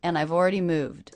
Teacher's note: did you notice how I reduced the word and? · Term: schwa N sound